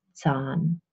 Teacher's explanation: It's a long half open central vowel, Zahn. It's a little bit more open, it's a little bit longer than English love.